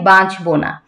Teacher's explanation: বাঁচবো না যে চন্দ্রবিন্দুটা আছে সেটাও আমি উচ্চারণ করেছি। একটু চন্দ্রবিন্দুর জন্য নাকে যে হালকা হয়, একটু বাজে নাকে, একটু নাকে নাসিক্য একটা প্রভাব আছে